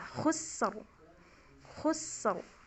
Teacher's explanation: Khus karena sin itu huruf tipis ya, dan dia ngalir dulu, juga sofir, rokhwah dan sofir sin itu. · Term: ro tebal